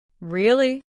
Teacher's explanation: Say really with a rising tone. This shows interest or surprise.